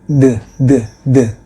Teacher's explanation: ada di antara Gigi atas dan Gigi bawah tetapi mengeluarkan suara seperti suara huruf d